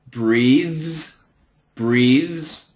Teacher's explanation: the TH is vibrated TH, and the S is a Z